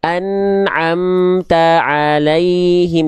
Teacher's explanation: Jadi taknya tetap teguh, tidak masuk huruf ain. Nggak kemasukan huruf ain gitu.